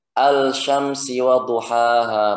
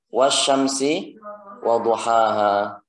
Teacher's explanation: lamnya dileburkan, bukan al-syamsi wadhuhaha, bukan, tapi wasyamsi wadhuhaha